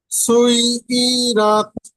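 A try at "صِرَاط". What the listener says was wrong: আচ্ছা, পড়েছেন ঠিক, কিন্তু ইতে টান দিয়ে দিয়েছেন। সুই ই রত, একটু ইতে টান দিয়ে দিয়েছেন, কিন্তু টান হবে না। সুই ই রত, সুই ই রত।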